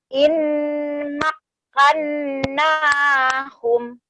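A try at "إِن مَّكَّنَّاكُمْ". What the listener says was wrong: Oke, teh di sini bukan in ya, tapi mim langsung. Kenapa? Karena ini adalah kata yang bertemu dengan mim. Coba bibirnya menutup. Makkannakum. Kum, terang bunyi kafnya. Kum, gitu.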